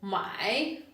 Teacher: My with a third tone which means to buy